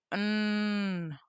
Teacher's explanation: air flows through the nasal cavity, producing nasal sounds like mm. When it is raised, when it is raised, airflow is directed through the oral cavity.